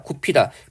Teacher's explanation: 비읍 희은 만나서 피읍 축약해서 발음하고